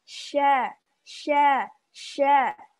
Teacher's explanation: dia punya sifat tafasyi menyebarnya udara dengan deras ke permukaan lidah